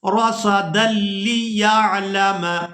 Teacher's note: ہم دال کو لام مشدد کے ساتھ ملائیں گے رصدا لیعلم، یعنی دال کے اوپر جو دو زبر ہیں اس کے ساتھ ہم نے لام مشدد کے ساتھ ملانا ہے اس کو رصدا لیعلم.